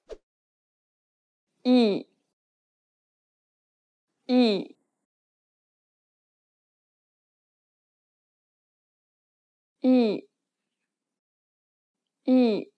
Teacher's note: open your mouth as if you were trying to show your teeth and say the letter E. Say it like the E in meat, but shorter.